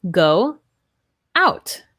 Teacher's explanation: when we have our two o's go out it's like we have a w there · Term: wha sound